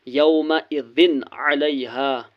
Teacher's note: یہاں پر تنوین کے بعد عین ہے، عین حرف حلقی ہے اس لیے یہاں پر نون کو ظاہر کرنا ہے۔